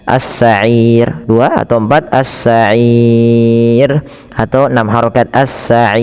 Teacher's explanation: Nah, sebelum sukun arid ada huruf mad berupa ya, dan inilah yang dinamakan dengan mad arid disukun. Panjangnya boleh 2, boleh 4, boleh 6